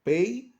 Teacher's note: al medir la e y la i se unen una sola sílaba